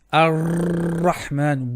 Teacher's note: way too much tikrar or repetition or trilling